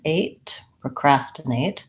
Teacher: It's vowel schwa, procrastinate. And we have a clear A vowel here at the end